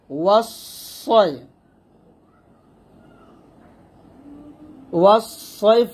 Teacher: ওয়াওকে সদকে যখন ধরবে, সদটা মোটা হবে